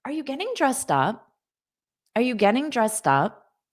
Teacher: I have a slight rising intonation at the end of the question because it's a yes, no question. Because of that, you can do a rising intonation.